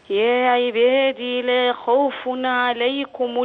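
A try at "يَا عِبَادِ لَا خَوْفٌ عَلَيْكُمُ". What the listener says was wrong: الروايه في كلمه يا عباد لا بحذف الياء وقفا ووصلا يعني هنطق د مكسوره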